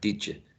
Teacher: So you can be reduced to ya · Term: reduction